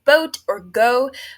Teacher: Midwesterners pronounce the long O sound as a diphthong, comprising 2 distinctive vowel sounds